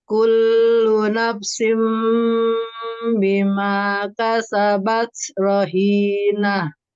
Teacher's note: merubah nun sukun menjadi bunyi mim sukun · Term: Iklab